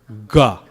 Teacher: Notice where your tongue is when you say ga, right? It's touching way back in your throat. Ga, okay? Ga. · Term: gutturals